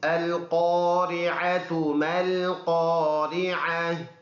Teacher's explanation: یہ قوف ہے تو اس کو تالو سے منہ بھر کر پڑھیں گے